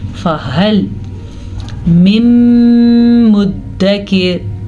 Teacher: ये हा जो है गले से निकले जाने वाला हर्फ है, बल्कि गले के आखिरी हिस्से से निकलता है। हा नहीं है, खौ नहीं है, ये है हा।